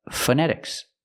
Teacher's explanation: don't use the O use the short uh